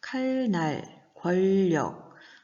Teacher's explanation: 이 단어들은 칼, 날, 권력으로 소리가 납니다. 즉, 날의 니은이 리을로, 권의 니은이 리을로 바뀌어서 소리가 나는 것이죠. 리을로 바뀌었으니까 유음화, 교체에 해당합니다.